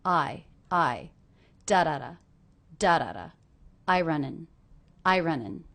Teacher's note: I is a little bit more stressed than running